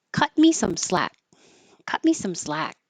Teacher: you won't hear this T in cut. So cut me. Cut me some slack.